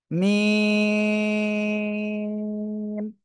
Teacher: মিম অক্ষরটা উচ্চারণ হবে দুই ঠোঁটের শুকনো জায়গা থেকে, এই দুই ঠোঁটের শুকনো জায়গা থেকে।